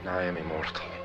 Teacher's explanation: There is one tapped R you can hear in the word immortal.